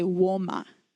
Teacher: it's totally okay to just add a little bit of a W at the beginning